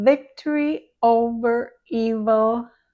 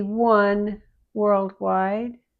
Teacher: V, the bottom lip goes backward into the mouth and between the teeth. With the W, the lips pull forward toward the center and push out a little.